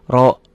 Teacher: Kenapa jadi O karena ini rnya tebal